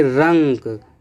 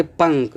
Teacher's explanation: अनुस्वार का उच्चारण करते समय वायु केवल नाक से निकलती है।